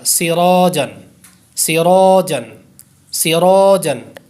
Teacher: اسی طرح آپ یہ دیکھیں سراجن، یہاں پر بھی الف سے پہلے پر حرف ہے، را پر زبر ہو تو ہمیشہ را پر ہوتا ہے، تو اس لیے یہاں پر بھی را پر ہوگا اور الف بھی پر ہو جائے گا یعنی موٹا پڑا جائے گا، سراجن، سراجن، سراجن۔